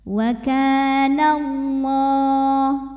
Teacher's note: Lam pada lafaz Allah dibunyikan secara tafkhim sebab huruf sebelumnya berbaris fathah, maka bunyinya Allah tebal.